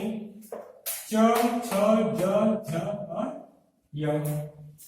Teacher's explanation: चू से च वर्ग, च वर्ग, च वर्ग यानी च छ ज झ और य। च वर्ग में 5 वर्ण य और श, इतने वर्ण तालु से बोले जाएंगे